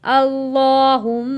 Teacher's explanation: اللہم، اس لفظ کو ہم نے ہمیشہ موٹا پڑھنا ہے، میم کے اوپر تشدید ہے تو ہم نے یہاں پہ غنہ بھی ادا کرنا ہے